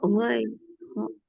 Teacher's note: Kemudian di tenggorokan bagian atas ada ghain dan kho